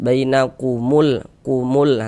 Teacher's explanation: cara membaca huruf lamnya dibaca izhar, terbaca dia dengan jelas. Bainakumul kumul, terbaca kan huruf lamnya. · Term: izhar qamariyah